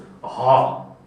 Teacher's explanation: अतिकण्ठ्य भनेको घाँटीको पनि अझै भित्री भागबाट उच्चारण हुने वर्णलाई अतिकण्ठ्य भनिन्छ। अतिकण्ठ्य भनेको घाँटीको फेदबाट उच्चारण हुने वर्ण, फोक्सोबाट सासबाट आइसकेपछि पनि ऐको कण्ठ्य वर्ण भन्दा पनि अझै तलबाट उच्चारण हुने वर्णलाई के भनिन्छ अतिकण्ठ्य।